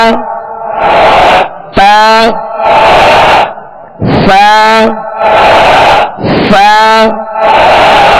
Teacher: सा में जबान का सिरा ऊपर के दांतों के अंदरूनी किनारे जबान का सिरा और ऊपर के दांतों के अंदरूनी किनारे अब ये जबान का सिरा ये है बिल्कुल आगे सामने वाला